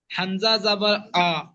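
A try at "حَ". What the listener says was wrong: হা, এটা হা, হামজা নয়, হামজা এই তো, তার আগে একটা হা রয়েছে, দেখেন এই যে। এটা হালকা আওয়াজ না, এটা মোটা আওয়াজ, হা।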